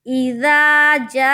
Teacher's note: हमजा जेर ई, दाल अलिफ जबर दा, इज़ा, जीम अलिफ मद जबर जा, हमजा जबर आ, इज़ा जा, इज़ा जा। गौर कीजिए यहाँ पे मद है और मद को खींच कर पढ़ेंगे।